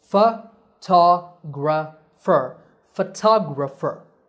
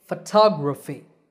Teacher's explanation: The next 2 words are photographer and photography. In these words, the stress is on the second syllable. It becomes a long ta, and the other vowels become short.